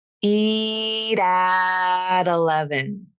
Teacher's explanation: here you have two flaps